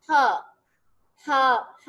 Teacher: अब ये वाहिद वो साउंड है जिसमें जबान का इस्तेमाल नहीं होता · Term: ग्लॉटल्स